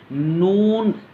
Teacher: इसके बाद है नून, सामने की तरफ आवाज़ करके पढ़ना है। नून, ज़बान की नोक है उसको ऊपर के तालू से लगा के पढ़ेंगे